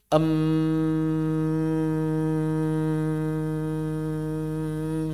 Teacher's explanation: Ketika mengucapkan mim maka aliran udara tertahan di bibir. Em. sehingga suara bergetar di aqsala khaisyum. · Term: huruf ghunah